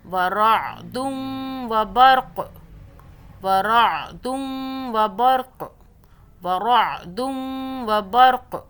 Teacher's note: جب رکے قاف پر تو قاف کو ہم نے قلقلہ کر لینا ہے، جھٹکے سے پڑھ لینا ہے